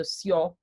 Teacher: J, as in a lot of Scandinavian languages, a lot of Germanic languages, it makes a Y sound